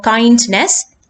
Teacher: kindness two syllables the kind part will be stressed